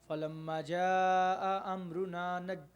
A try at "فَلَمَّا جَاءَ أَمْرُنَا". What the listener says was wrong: میم کو ذرا تھوڑا سا نا، الف کو تھوڑا سا ذرا اور فلما پھر پڑھیں۔ بالکل کاٹے نہیں، فلما، نہیں، یہ جو کاٹ رہے ہیں نا، کاٹنا نہیں، دیکھیے فلما جاء،